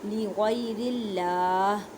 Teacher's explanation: اللہ کے لفظ کو باریک پڑھیں کیونکہ اللہ کے لفظ سے پہلے زیر ہے